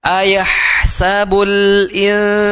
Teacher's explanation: ngalir dulu karena dia memiliki sifat hams, huruf ha. Ayahsabul insan, di situ ada nun sukun, ya.